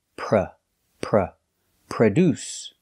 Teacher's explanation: The first syllable is pronounced with the relaxed sound, like cup and up.